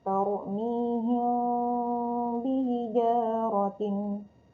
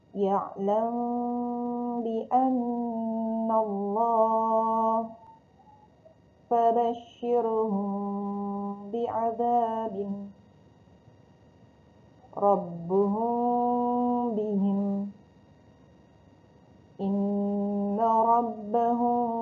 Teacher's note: Mim mati bertemu ba, bibirnya agak sedikit terbuka ya, tidak terlalu rapat. Lalu masih ada udara yang keluar dan ditahan 2 harokat. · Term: ikhfa safawi